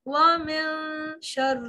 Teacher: نون کو واضح نہیں کرنا ہلکی سی آواز ناک میں لے جانی ہے